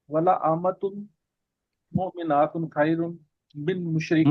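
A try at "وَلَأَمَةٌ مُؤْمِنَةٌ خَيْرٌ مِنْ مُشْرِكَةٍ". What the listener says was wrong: مومنات نہ کریں، مومنات ہوگا تو جمع ہو جائے گا، مؤمنتن ہوگا تو ایک عورت ہوگی مومن.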